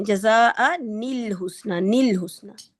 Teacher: نون کے اندر جو اس کی اپنی غنہ کی صفت ہے، بے شک اس کی جو اسٹرینتھ ہے وہ بہت کم ہے لیکن پائی جاتی ہے وہ